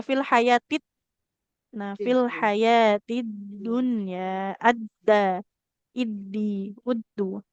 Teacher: kita melalui dulu bunyi dal sukun tapi tidak dipantulkan ya. Jadi jangan kayak mau ke huruf ta. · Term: tasydid huruf dal